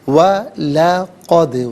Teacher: دال ساکن ہے لیکن کلکلا ہے تو یہاں آواز لوٹتی ہوئی محسوس ہونی چاہیے